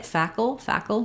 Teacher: it's a syllabic l so there's a little bit of a schwa sound before it · But you can say it fackle, just like we do Seattle or little, where I'm moving right from that L to that flap, faculty, or that K to that L, fackle. It's a syllabic L, so there's a little bit of a schwa sound before